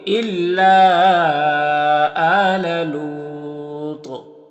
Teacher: طا میں قلقلہ بھی ہوگا کیونکہ حروف قلقلہ میں سے، اور طا کو پر پڑھیں گے کیونکہ یہ حروف مستعلیہ میں سے بھی ہے، تو یہاں پر